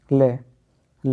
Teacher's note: ल को पार्श्विक वर्ण भी बोलते हैं और इसके उच्चारण में क्या होगा हवा जीभ के बगल से निकल जाएगी